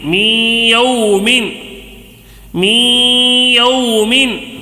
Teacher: نون ساکن ہے، اس کے بعد یا آ گیا ہے، نون ساکن کے بعد یا آیا ہے تو ادغام مع الغنہ ہوگا، غننے کے ساتھ ہوگا